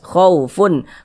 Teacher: Karena dia izhar maka dibaca jelas dan tidak berdengung.